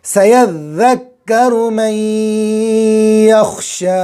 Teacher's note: बड़ा शीन निकालेंगे, ज़बान का बीच ऊपर का तालु। जो जिम का मखरज है वो शीन का मखरज है। · ज़ाल पर तशदीद है और काफ पर भी तशदीद, दोनों को दो दो मरतबा।